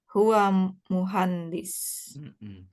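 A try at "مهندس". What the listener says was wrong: Jangan muhandis, jangan ya. Jangan pakai ikhfa, muhandis.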